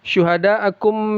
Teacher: syuhada akum mad wajib muttasil ya dibaca 4 sampai 5 harakat